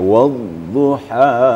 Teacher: di ha itu agak berhembus ada hamasnya kemudian penekanan waili saja jadi setiap Tanda tasdid itu ada penekanan